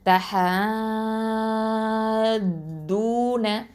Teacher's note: இந்த தஹது அப்படின்னு சொல்லும்போது 6 ஹரக்கத் அளவுக்கு வரைக்கும் நீட்டி நம்ம ஓதணும் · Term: மத்தல் லாசிம் அல் கலமி முசக்கல்